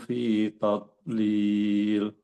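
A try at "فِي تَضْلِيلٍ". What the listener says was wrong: Do-nya tetap harus tebal.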